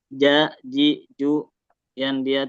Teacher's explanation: Enggak boleh c ja ci cu. Tapi ja ji ju tidak mengeluarkan udara terus ee dia memantul ya pantulan harus kuat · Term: huruf jim